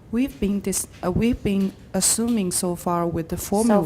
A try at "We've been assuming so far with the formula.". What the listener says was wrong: So far, pause. With 介系词, we need to pause.